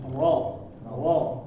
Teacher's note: praktiknya ya kalau dilihat dari gambar di sini lidahnya melengkung ya kalau ro karena dia tebal Ro Jadi bagian belakangnya itu agak naik sedikit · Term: ro yang tebal